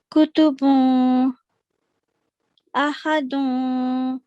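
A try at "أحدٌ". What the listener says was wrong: इसको इख्फा नहीं करना आपने. मुझे क्यों लग रहा है कि आप नून को कंसील कर रही हैं. Don't conceal it. अहदुन. जब नून को कंसील करते हैं ना वो इख्फा हो जाता है. और गुन्ना का असूल है, यानी इसके तलफ़्फ़ुज़ में नून की आवाज सिर्फ पैदा करें.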